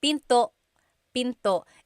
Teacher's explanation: Don't forget to stop the sound at the end. That's called a glottal stop. Pinto. Pinto.